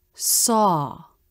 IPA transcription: sɔ